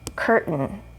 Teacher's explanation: Again, we have a vowel sound, or sorry, here we have our R sound, actually, curt, and then we have the vowel, which is omitted, so we're just going to go straight to that N.